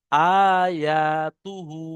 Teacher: হার উপরে উল্টো পেশ আছে, উল্টো পেশটি হলো ওয়াও মাদ্দার সমতুল্য, তাই একে এক আলিফ পরিমাণ টান দিয়ে পড়তে হয়।